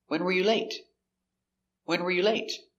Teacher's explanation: Question, when were you late is an information question. It starts with a question word, when. So the intonation goes down at the end.